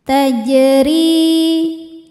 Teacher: Huruf ra dibaca secara tarqiq sebab ra harokatnya di bawah kasrah. Cara membacanya ra dibaca dengan tipis.